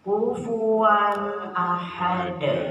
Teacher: jadi tidak diengung tapi jelas tegas ya tapi tidak loncat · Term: Idhar izhar